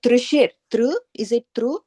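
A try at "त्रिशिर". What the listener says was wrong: No, it's not tr. So it's like TVRI.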